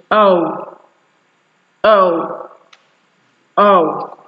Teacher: Just like I've said earlier, during the production or the articulation of these sounds, your mouth actually moves upwards and then backwards, because you are actually moving from the articulation of a central vowel to the articulation of a back vowel. That's why there is a movement that takes place in your mouth, so that your lips actually change from a neutrally relaxed position to a slightly rounded position.